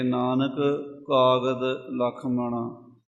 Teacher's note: ਨਾਨਕ ਕਾਗਦ, ਇਹ 2 ਵਾਰੀ ਕਾਕਾ। ਨਾਨਕ ਦੇ ਅਖੀਰ ਵਿੱਚ ਕਾਕਾ ਤੇ ਕਾਗਦ ਦਾ ਪਹਿਲਾ ਕਾਕਾ, ਇਹ ਕਿਤੇ ਇਕੱਠਾ ਨਾ ਹੋ ਜਾਵੇ, ਇਹ ਖਿਆਲ ਰੱਖ ਕੇ ਨਾਨਕ ਕਾਗਦ ਲਖ ਮਣਾ।